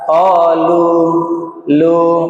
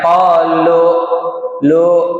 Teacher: Huruf-huruf akhir yang panjang dua harakat tidak boleh mentok menghadirkan tanda petik atau hamzah. Qolu lu jangan q lu gitu dilandaikan lu lu jangan medok aja medok begitu ya.